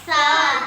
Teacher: سا زبان کی نوک اور سامنے والے 2 دانتوں کے کنارے سے زبان کی نوک لگے گی تو سا ادا ہوگا